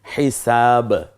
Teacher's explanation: 2টা ঠোঁট যেন হরফটাকে বের করে দিচ্ছে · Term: কলকলা